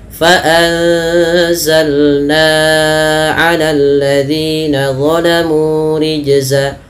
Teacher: Ya, antara zi dengan na beda. Na-nya lebih panjang dibandingkan zi-nya